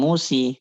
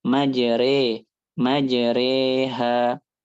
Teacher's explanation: Waliq apa bukan fala hiya alif kholisah wala hiya ya khalisah. Jadi dia bukan alif murni bukan ya murni juga gitu tapi dia itu porsinya 5050 50 alif 50 ya. Fahiya alif mutawallidah min lafil ya takfifan. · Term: alif mumalah